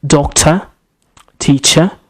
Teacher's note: all these words, they have a schwa sound at the end.